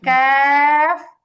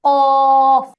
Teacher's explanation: কাফ এটা হচ্ছে একদমই নরমাল বাংলা ক এর মতো কাফ এরপরে কফটা হচ্ছে মোটা